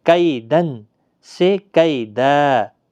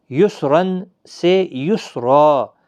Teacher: تنوین کو الف سے بدل دیں گے، اور 2 زبر کی تنوین کو 1 الف کے برابر کھینچ کر وقف کریں گے، یعنی 2 زبر بدل کر 1 زبر لگا کر الف مدہ بنے گا، 1 الف کی مقدار کے برابر کھینچ کر وقف کرنا ہے۔ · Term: وقف بالابدال